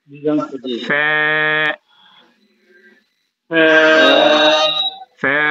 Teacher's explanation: উপরের দাঁত নিচের ঠোঁটের পেটের সাথে লাগবে